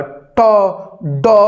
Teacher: मूर्धा, जिसमें जाकर टकरा टकरा के आवाज निकलती है, तो उसको हम लोग बोलते हैं मूर्धन्य, ठीक है। इसीलिए इसको कर्कश व्यंजन भी बोलते हैं, ठीक है, क्योंकि जब इसको बोलेंगे ना ट, तो जाएगा और टन से आवाज आएगा, ट ड, तो आप इसको फील कीजिए बोल के खुद से।